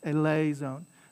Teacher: The accent is on the lay